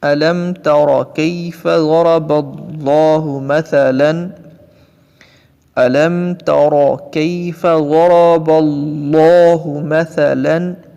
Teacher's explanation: زبر ہے، تو لفظ اللہ کو پر کر کے پڑھیں گے